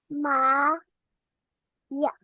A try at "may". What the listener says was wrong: Hindi po siya ya. Wala pong A. May.